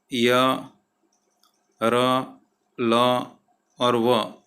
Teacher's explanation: इसमें वर्ण का जो उच्चारण है वो स्वर और व्यंजनों के बीच का होता है। जैसे कि य, र, ल और व, ये जो है वो अंतस्थ व्यंजन है।